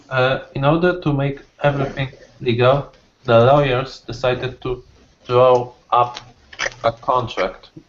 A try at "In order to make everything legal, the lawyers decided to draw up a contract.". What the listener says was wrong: Perfect. Draw up a contract.